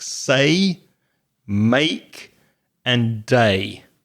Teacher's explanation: Basically a dip thong is when the mouth moves from one vowel position to another. You glide. That means you move very gently, very smoothly between two sounds in one syllable.